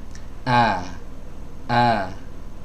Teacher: huruf alif kalau huruf alif ya itu keluar dari al-jauf Sedangkan ini adalah huruf hamzah keluar dari tenggorokan bagian bawah · tempat keluarnya sebagaimana tempat keluarnya huruf hamzah, ya, dari tenggorokan bagian bawah atau dari pita suara